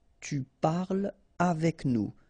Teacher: So no liaison here between parle and avec